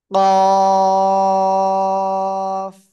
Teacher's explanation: কোন জায়গা থেকে উচ্চারিত হবে জিহ্বার গোড়া খেয়াল করতে হবে কিন্তু জিহ্বার গোড়া তার বরাবর উপরে তালুর সাথে লাগাবো লাগিয়ে আমরা মোটা আওয়াজে উচ্চারণ করব · শেষে হালকা বাতাস বের হবে